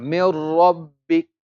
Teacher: we will join the Mim with the Ra, but no ghunna